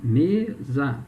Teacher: Qual é a sílaba tônica em mesa? É o me, né?